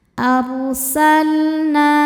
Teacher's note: Na hukumnya mad tabi'i dhahiri karena ada alif sebelumnya fathah. Cara bacanya panjang 2 harokat.